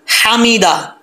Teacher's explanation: اللہ، ہو، ہا پیش ہو نہیں پڑھنا، ہو، لیمن، لیمن، حمیدہ، یہ ہا بریک ہے، اس کا تعلق حلق سے ہے، اس کو بریک پڑھنا ہے ، حمیدہ نہیں پڑھنا، یہ اکثر لوگ کی مسٹیک ہے، حمیدہ،